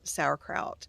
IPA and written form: ˈsaʊ.ərkraʊt (Sauerkraut)